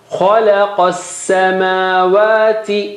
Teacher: Kha is high and qaf is also high, but lam is low.